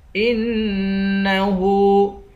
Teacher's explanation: ہاں پہ الٹا پیش ہے، اس کو ایک الف کی مقدار کھینچ کر پڑھیں گے